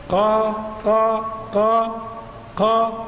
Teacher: نقول ان القاف يكون في اقصى اللسان تحت